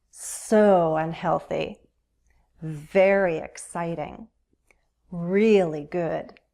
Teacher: when we use intensifiers in conversation we can use our voice for emphasis you can hear that long vowel sound in the stressed syllable